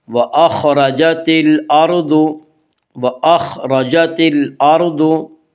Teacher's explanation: را کے اوپر زبر اور پیش ہے تو را کو پر پڑھا جائے گا، را کے نیچے زیر ہے تو را کو باریک پڑھا جائے گا، یا را کے اوپر زبر اس سے را کو پر پڑھیں گے۔